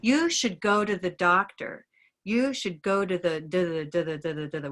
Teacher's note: North Americans will say, you should go to the doctor. You should go to the with a D, yeah? So we have a slight difference there, very unnoticeable, but I just wanted to acknowledge it just because we're listening carefully, right?